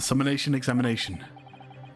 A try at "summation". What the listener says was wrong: Summation, guys, not summonation. Oh my god! Summation! Summation! Summation. Summation.